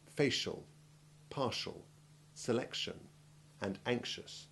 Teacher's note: c t and x acquire the sh sound